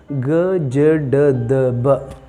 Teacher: ಸಿ ಇನ್ನು ಗ ಜ ಡ ದ ಬ ಅದು ವಾಯ್ಸ್ಡ್, ಕ್ಲಿಯರ್, ಅಲ್ಲಿ ಎಕೋ ಬರುತ್ತೆ.